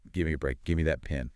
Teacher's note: The vowel sound in give might weaken a bit. The V sound sort of merges into the end.